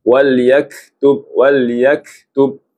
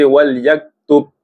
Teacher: Huruf kaf dia ada sifat sama sifat mengalirkan nafas.